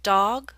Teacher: Your mouth is more open for the aw in dog.